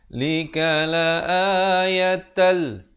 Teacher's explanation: Asalnya la ayatan, tapi bila datang lam masuk tanpa dengung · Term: idgham bila ghunnah